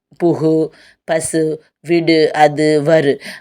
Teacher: தனி குறில் எழுத்தை அடுத்து அந்த வல்லின உகரம் வந்துச்சுன்னா அது எப்படி குறையாது முழு மாத்திரையோடு ஒலிக்கும் ஒரு மாத்திரை அளவுக்கு முழுமையாக ஒலிக்கும் அதை என்ன சொல்லுவாங்கன்னா முற்றியல் உகரம்னு சொல்லுவாங்க